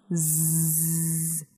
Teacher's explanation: if you put your finger in your adam's apple or your voice box and you produce the long z you should feel the vibration this shows that z z is a voice sound however for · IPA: [z]